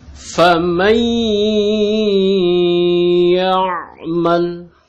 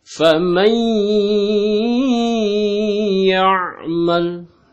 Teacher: Didengungkan, ya, masuk ke hidung dan ditahan, begitu ya. Ditekan lalu ditahan 2 harakat. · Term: idgham biguna